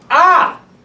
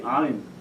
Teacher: the aleph and the ayin are very similar sounds, but the difference is that the ayin is a little more guttural, but it's very slight